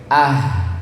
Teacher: huruf H ini di pita suara Bapak Ibu. Tempatnya di pita suara seperti huruf hamzah.